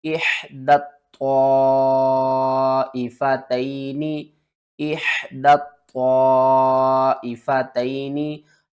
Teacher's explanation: त्वा हरूफ मुस्तालिया में से है, आपने इसे मोटा करके पढ़ना है। और त्वा के आगे देखें तो मद है, इसको 5 अलिफ के बराबर खींच कर पढ़ेंगे, मद्दे मुत्तसिल है।